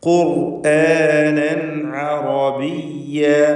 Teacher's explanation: തൻവീനിനെ ഇൽഹാർ ഹൽഖി നൽകി മണിക്കാതെ വെളിവാക്കുക